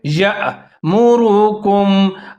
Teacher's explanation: یا کے ساتھ حمزہ ساکن ہے، جھٹکے کے ساتھ پڑھیں گے